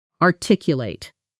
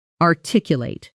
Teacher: The stress falls on the second syllable.